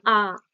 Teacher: আ জীবটা দেখো একেবারে তলায় ঠেকে আছে নিচে · নিচে তো কি হচ্ছে এটাকে কি বলবে নিম্ন আর কি হচ্ছে একেবারে ঠোঁটটা বিস্তার লাভ করছে তাই না একেবারে প্রসারিত